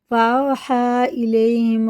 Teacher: یا ساکن سے پہلے زبر ہے، ابھی میں نے پہلے اوپر بتا، یہ حرف لین ہے، جلدی پڑھیں گے، معروف آواز کے ساتھ، نرم آواز کے ساتھ، اسے جلدی ادا کریں گے۔